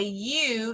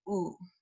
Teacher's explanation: in English when you say you your lips are a little bit flatter but in Spanish your lips should be very rounded